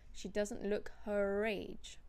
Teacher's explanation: because her is followed by the word age, which starts with a vowel, you do pronounce the R.